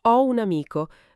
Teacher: La O di O si lega alla U di un e diventa quasi ho un amico, pronunciato tutto insieme. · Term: legatura o liaison